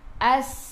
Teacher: As masuk ke dalam sin. Sin ada sukun. Sifat huruf sin safir kena bunyikan as.